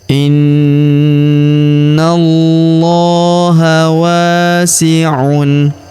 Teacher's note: Kemudian huruf na langsung disambung masuk ke lafaz Allah atau lafzul jalalah. Pada huruf lamnya kita tahan dan kita tekan karena terdapat tanda tasdid di atasnya. Lalu kita panjangkan dua harakat karena alif kecil di atasnya ya.